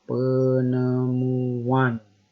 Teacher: Ada penambahan konsonan W.